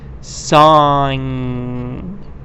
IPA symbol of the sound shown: ŋ